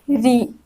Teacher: री का उच्चारण करने में मूर्धा का प्रयोग हो रहा है, मूर्धा, इसलिए इस वर्ण को कहेंगे मूर्धन्य।